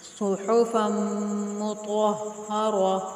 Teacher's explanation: بولتا وقت کی حالت میں ہائے ساکنہ سے بدل جاتی ہے، اگر ہم اس لفظ کے اوپر وقف کریں گے، سٹاپ کریں گے تو اس تا کو ہا ساکن پڑھیں گے